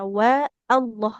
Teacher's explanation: lafaz Allah lamnya tebal tapi tanpa menebalkan dari huruf wunnya